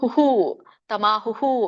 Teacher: ಇಲ್ಲಿ ಕೊಟ್ಟಿಲ್ಲ ಅವ್ಯಕ್ತಕ್ಷರ ಇತ್ಯುಕ್ತಹ ತಮಹು ನೋಡಿ ಇಲ್ಲಿ ಹುಕೆ ಮತ್ತೆ ವಿಸರ್ಗ ಇದೆ ಹಿಂದಿನ ಒಂದು ವ್ಯಂಜನ ಯಾವ ಸ್ವರ ಹೊಂದಿದೆಯೋ ಅದೇ ಸ್ವರ ವಿಸರ್ಗ ಕೂಡ ಉಚ್ಚಾರಣೆ ಆಗುತ್ತೆ ವಿಸರ್ಗದ ಒಂದು ಉಚ್ಚಾರಣೆ ಏನು ಹ ಅಲ್ಲ ಸೋ ಹುಹು ತಮಾ ಹುಹು ಅಂತ